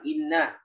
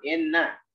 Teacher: Yang i dibaca i, jangan dibaca imalah, yang dibaca e.